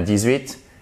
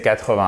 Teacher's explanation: c'est 80 avec l'accentuation au début